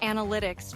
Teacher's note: I find words like analytics tricky, especially because the stress is on the second syllable.